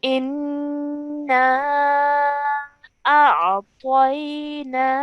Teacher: The noon mushaddad needs to be pronounced for 2 counts because of the gunna sound.